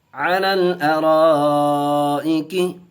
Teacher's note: यहाँ मद्दे मुत्तसिल का कायदा होगा, 4 अलिफ खींचेंगे।